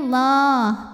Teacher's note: lam pada lafal Allah atau lam jalalah dibunyikan secara tafkhim